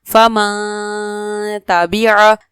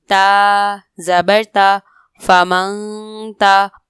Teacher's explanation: غنہ کی جو آواز ہے وہ ایک الف کے برابر ناک میں ٹھہرا کے رکھنی ہے